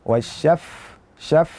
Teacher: gigi seri atas bertemu dengan perut bibir bagian bawah. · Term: fa